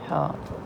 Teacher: وسط حلق مطلب کہ حلق سے نکلتا ہے